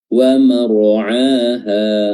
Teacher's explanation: ra-nya juga kita tebalkan, ya, tafkhim karena dia sukun didahului oleh fathah